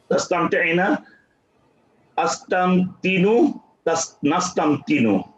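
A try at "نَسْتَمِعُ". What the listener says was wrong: নাস্তামতিউ, নো আসলো কোথা থেকে?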